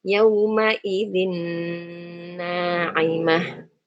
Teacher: Nun sukunnya masuk ke nun yang kedua. Nun yang kedua. Disertai dengan dengung tentunya. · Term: idgham